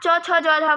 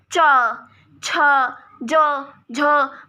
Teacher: जब हम किसी शब्द को बोलते हैं और हमारी जीभ ऊपर वाले दांत से या फिर हमारे जबड़े से टच हो जाए और उसके बाद हवा बाहर आए हमारे मुंह से, उसको बोलते हैं स्पर्श संघर्षी